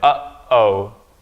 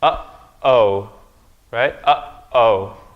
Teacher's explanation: You're not combining these two vowels here and saying oh, right? There's a stop in the middle. Uh-oh. Your vocal cords close. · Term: glottal stop